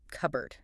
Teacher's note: But that p is silent, right?